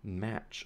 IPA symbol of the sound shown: m